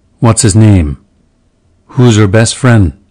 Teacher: Initial H on he, he's, him, his, him, her, hers, in unstressed positions, will be dropped. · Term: H dropping